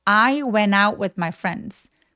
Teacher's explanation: went처럼 NT로 끝나는 단어들의 T 발음을 무시하고 발음을 아예 안 하는 또 원어민들의 습관이 있습니다.